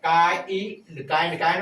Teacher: आ और ई का उच्चारण होगा आई